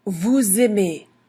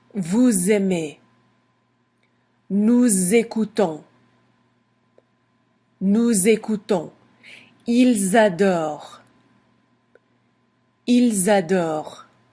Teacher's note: then we make a little liaison that pronounces like a Z